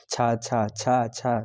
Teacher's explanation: तालू की हेल्प से बोल रहे हैं यानी कि आपका जीभ पूरा पलट रहा है